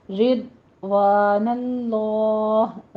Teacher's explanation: ضاد کو پر پڑھنا ہے، زبان کی کروٹ پر داڑوں کے ساتھ لگا کے اپنے سٹاپ کرنی ہے۔ رضوان اللہ، لفظ جلالہ کو پر پڑھتے ہوئے اگر یہاں وقف کریں گے تو آخر میں ہا کی آواز آپ نے ظاہر کرنی ہے، اس کو اسکپ نہیں کرنا۔